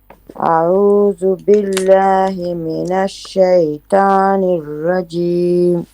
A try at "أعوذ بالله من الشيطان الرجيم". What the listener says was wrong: It is not ta, it is to. Make it heavy. To.